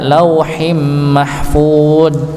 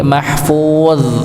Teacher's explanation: ditebalkan huruf dha-nya ya